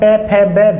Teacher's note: जब इसको हम पै, फ, ब, भ जब बोलते हैं हम तो इसका उच्चारण उच्चारण करते समय दोनों जो ऊपर के और नीचे के जो दोनों ओष्ठ होते हैं वो क्या होते हैं? टकराते हैं आपस में